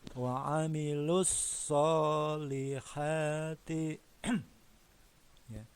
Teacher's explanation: alif lamnya ini tidak dibaca langsung ke huruf shad. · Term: alif lam syamsiah